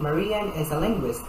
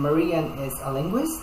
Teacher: ends with a fall in pitch, while as a question, Marian is a linguist, the pitch goes up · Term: intonation